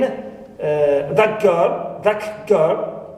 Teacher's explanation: ta turns into ka. Why? Because it is followed and influenced by ga